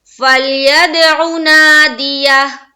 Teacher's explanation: عین کی آواز واضح نکل رہی ہے پیش کی حرکت کے ساتھ. نا میں الف مدہ کرنا ضروری ہے، اور یہ جب کریں گے تو ہا واضح طور پر نکلنی چاہیے.